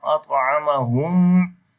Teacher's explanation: On the ta you will make qalqala, and this qalqala will be weak qalqala